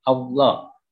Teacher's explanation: Menurut istilah, mengucapkan huruf tebal sampai memenuhi mulut ketika mengucapkannya. Bunyi lam pada lafal Allah yang dihukumi tafkhim harus dibaca tebal. Allah. Jadi lam jalalah di sini dibaca tebal.